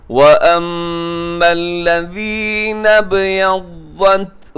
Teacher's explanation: یہاں با کلکلہ کیجیے گا